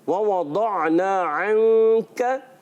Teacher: दौद को पुर करके अदा करना है, आइन की अदायगी क्लियर रखनी है।